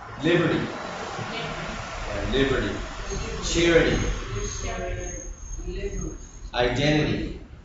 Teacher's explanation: That last TY, it almost sounds like a D, okay? Don't make it a hard D, but it almost sounds like a D, not like a T. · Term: really soft D